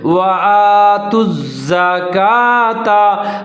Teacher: تا اور زا دونوں ملا کے پڑھیں گے، مضبوطی کے ساتھ پڑھیں گے، زا کو ظاہر کر کے پڑھیں گے